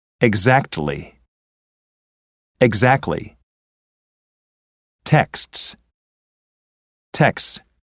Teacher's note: in the last two words the T can be dropped